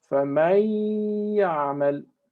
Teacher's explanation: We have here one word that ends with noon, faman, and then we have one of the letters of idgham ya, yarmalun, and instead of saying faman ya'mal, because that would be idhar, we say faman ya'mal. Okay, that is ghunna with 2 harakat